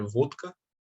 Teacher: Então, por exemplo, o vodka, na verdade, é vodka, que se pronuncia em russo. O D ele vira desvozeado porque o K, que vem logo depois, é desvozeado.